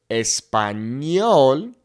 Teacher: The n in Spanish just makes an n and a y sound put together